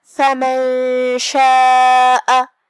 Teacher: کلمت فمن کے آخری میں نون ساکن ہے، پھر حرف الشین ہے کلمت شاء میں، شین حروف الاخفاء میں سے ہے تو ہم یہاں نون کو چھپاتے ہوئے اور غنہ کے ساتھ یہ حکم کو ادا کریں گے۔ فمن شاء، کلمت شاء میں یہاں مد ہے، یہ مد واجب متصل ہے تو ہم اپنی آواز 4 مد کے برابر لمبی کریں گے۔